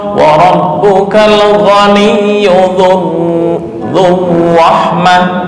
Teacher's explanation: Gunnah dicampur ikhfa ditambah takrir, jadi lebih lama. makanya termasuk urutan paling tinggi dalam tasydid.